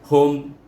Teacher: tertutup bibir kita menyebutnya hum, baru mim itu mati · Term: izhar syafawi